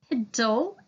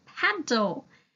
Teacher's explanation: And once you get the word piddle, you change the short I to a short A and have paddle